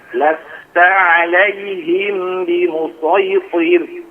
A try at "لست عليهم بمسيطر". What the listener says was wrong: Alaihim bi. Tahan agak lama lagi.